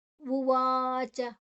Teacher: ಉವಾಚ ವ ದೀರ್ಘ ಅಕ್ಷರ ಚ ಹೃಸ್ವ